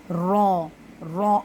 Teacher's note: ہمیں اس میں لگتا ہے کہ یہ ہم اس کو دو بار پڑھیں، ایسے آواز آتی ہے نا تو لگتا ہے کہ یہ دوہرا یعنی کہ دو بار یا تین بار اس کو دہرایا جا رہا ہے، تو ایسا بالکل بھی نہیں ہے۔ یہ پڑھا تو ایک ہی بار جاتا ہے لیکن اس میں محسوس اس طرح کی چیزیں ہوتی ہیں کہ یہ دوہرا ہے۔ اور دوسرا اس کا تھا کیا؟ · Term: تقریر